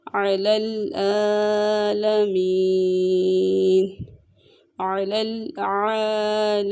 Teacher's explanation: عین وسط حلق سے ادا ہوگا اور عین کے اوپر کھڑی حرکات ہے، اسے ایک الف کے برابر لمبا کر کے پڑھیں گے